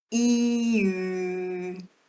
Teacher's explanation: So e nothing in my mouth changes. The only thing I'm changing is the shape of my lips going from wide open joker grin to fish mouth. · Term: roundedness